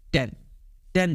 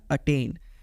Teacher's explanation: टी में क्या होगा आपको एक पफ सुनाई देगा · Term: एस्पिरेटर साउंड